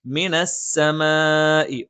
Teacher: ഒരേ പദത്തിൽ മദ്ദക്ഷരവും ഹംസും വന്നു. മദ് മുത്തസിലാണ്. നിർബന്ധമായും നീട്ടണം.